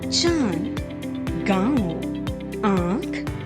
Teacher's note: इन स्वरों के उच्चारण में ध्वनि मुख के साथ साथ नासिका से भी निकलती है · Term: अनुनासिक